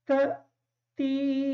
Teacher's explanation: تا کے بعد جو حمزہ ہے تھوڑا سا جھٹکا دے کے ادا کریں گے تاکہ یہ حمزہ صحیح طریقے سے ادا ہو جائے.